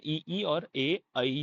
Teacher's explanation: इ ई और ए ऐ जो है आपके अग्र भाग से बोले जाते हैं। इन्हें अग्र स्वर भी कहा जाता है।